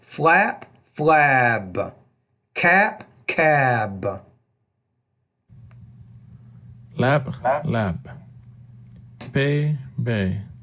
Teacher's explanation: the bees at the end of the word the vowel is going to be longer